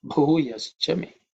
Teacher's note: The letter Bhu is aspirated because it's the fourth letter in the Pa Varga. Okay, so it has to be pronounced with some extra air, Mahaprana.